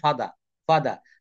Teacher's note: British উচ্চারণে আর এর উচ্চারণ হয় না তবে সব জায়গায় না কিছু কিছু জায়গায় করে কিছু কিছু জায়গায়